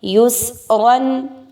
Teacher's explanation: یا پیش سین یس، را دو زبر رن، یس رن. اب اس میں را کو پر پڑھا جائے گا، را پر دو زبر کی تنوین ہے